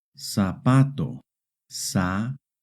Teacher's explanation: In Hispanic America, the letter Z makes an S sound.